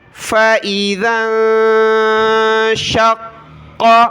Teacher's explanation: فا زبر فا, حمزہ زیر ای, فائی, ذال کو ملایا نون کے ساتھ, ذال نون زبر ذا, نون ساکن کا اخفا ہوگا, ناک میں آواز پیدا کریں گے. فَإِذَا, بہت سارے زا پڑھتے ہیں یہاں پر, فَإِذَن, زا نہیں پڑھنا, یہ ہے ذال.